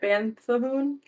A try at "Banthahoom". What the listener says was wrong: It's not it's Banthahoom. You're mispronouncing the second U. It's Banthahoom.